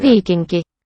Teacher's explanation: it sounds like this N is not velar